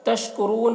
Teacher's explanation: را کو پر پڑھیں گے اور یہاں پر وقف کریں گے تو مد عارض وقفی ہو رہا ہے